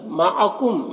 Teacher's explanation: میم میں اظہار شفوی ہو رہا ہے، اسے جلد پڑھنا ہے